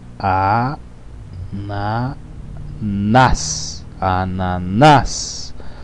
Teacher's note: Sílaba tônica é a última, portanto é uma palavra oxítona. · A última sílaba é a forte, é a tônica.